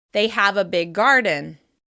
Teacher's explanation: We extend the /g/ sound and flow into the next word. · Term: gemination